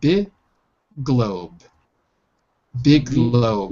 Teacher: So the G's cancel each other out. Big globe. The first G is dropped.